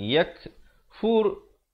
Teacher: Yak, ada hamas di situ, bunyi angin.